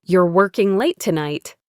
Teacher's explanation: did you hear my voice go down at the end? That was a statement.